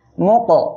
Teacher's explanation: মিম কফ পেশ মুক, কফ কলকলার অক্ষর সাকিন অবস্থায় আসছে, ধাক্কা দিয়ে পড়বেন।